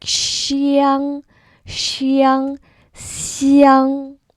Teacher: the first tone flat smile wide again for that X